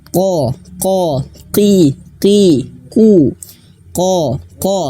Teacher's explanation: huruf qaf itu dia memiliki sifat tebal, tafkhim, ataupun juga bisa disebut dalam sifatul hurufnya isti'la, tebal, terangkatnya pangkal lidah. Dan tebalnya ini bukan karena bibir kita manyun, ko, ki, ku, ko, tidak, tapi diangkat pangkal lidahnya, ko, ki, ku, ko.